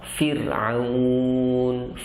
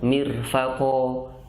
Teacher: Setelah ro sukun itu adalah huruf ain karena dia bukan huruf isti'la, maka ro tetap tipis. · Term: tarkik